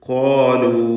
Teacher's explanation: ഈ വാവിൻ്റെ ദീർഘം മദ് മുൻഫസിൽ ജായിസാണ് എന്നത് ശ്രദ്ധിക്കുക